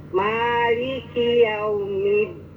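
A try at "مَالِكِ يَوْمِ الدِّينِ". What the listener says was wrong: Sekali lagi kurang syiddah ya. Harus syiddah apalagi ada tadid. Maliki yaumiddin.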